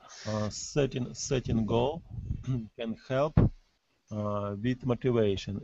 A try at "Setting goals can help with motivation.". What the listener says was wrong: So try not to swallow the S. So setting goals.